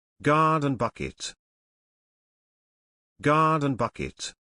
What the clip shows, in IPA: ˈɡɑː.dən ˌbʌk.ɪt